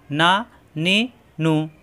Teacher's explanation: নুন অক্ষর জিহ্বা আগা উপরে তালুতে লাগিয়ে উচ্চারণ করতে হয়